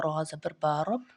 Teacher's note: را موٹا پڑھا جاتا ہے